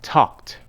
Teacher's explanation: The ed ending is pronounced as voiceless t when the base form of the verb ends with a voiceless sound other than t. Talk ends with k.